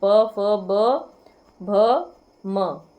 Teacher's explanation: आगे है जिन व्यंजनों के उच्चारण में दोनों ओष्ठों द्वारा श्वास का अवरोध होता है वे क्या कहलाते हैं, वे हमारे कहलाते हैं, दोनों ओठों का अवरोध होता है श्वास लेने में, क्या कहलाते हैं हमारे ओष्ठक। जैसे कि हम प फ ब भ बोलते हैं तो दोनों ओठों द्वारा श्वास का क्या है अवरोध होता है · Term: ओष्ठ व्यंजन